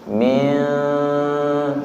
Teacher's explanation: Ikhfa niku samar, ujung lidahnya tidak nyentuh nggih. Min, suaranya samar.